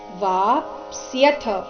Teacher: ಮತ್ತೆ ಮುಂದೆ ಥ ಮಹಾಪ್ರಾಣ ರಸ್ವ